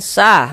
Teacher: maka huruf yang memiliki harakat fathah dibaca panjang sehingganya sa kita baca panjang. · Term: mad thabi'i